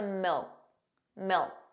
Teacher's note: did you hear that the final K sound, that K, was not pronounced? It was just a milk, milk.